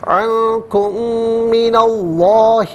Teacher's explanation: میم ساکن کو من کی میم کے ساتھ ملا کر میم کی آواز کو غننے کے ساتھ ادا کریں گے